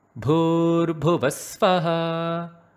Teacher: You note how I brought the svaha, the vaha in a high pitch. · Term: svarita